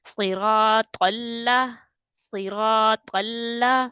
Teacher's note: قال لام زبر قل، صراط قل، لام زبر لا، صراط قل. اب قا کو لام کے ساتھ ملا رہے ہیں اور لام کو جمع کے پڑھ رہی ہیں